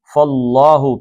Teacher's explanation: پیچھے زبر آ گئی تو اللہ کا لام موٹا پڑھنا ہے